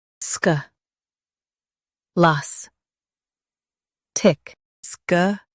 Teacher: Stress las and keep sk light.